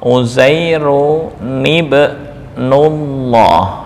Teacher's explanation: karena bertemu hamzah wasol ini diberi harokat penolong kasroh